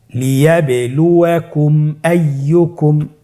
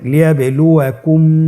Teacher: মিম সাকিনকে স্পষ্ট করে গুন্না ছাড়া পড়তে হবে। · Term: ইজহার সাফা